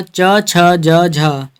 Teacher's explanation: ये हिंदी की तालव्य ध्वनियाँ हैं